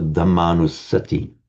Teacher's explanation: you merge those two short as into one long